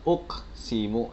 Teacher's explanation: ini adalah qalqalah sugro, jadi dibacanya tidak terlalu dipantulkan